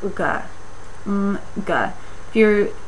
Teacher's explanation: you still make a velar sound, but you have to let the air out of the mouth